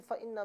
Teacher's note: اس کے بعد ناظرین فإن میں سب سے اول حرف فا ہے۔ فا اوپر کے دانتوں کے کنارے اور نچلے ہونٹ کے تری والے حصے سے ادا کیا جائے گا